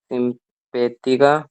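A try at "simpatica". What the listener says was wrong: सिम, पे कहाँ से हुआ? पी के बाद में क्या है?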